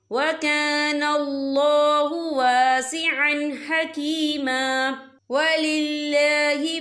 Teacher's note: یہاں اللہ کا نام باریک پڑھا جائے گا کیونکہ اللہ کے نام سے پہلے زیر ہے۔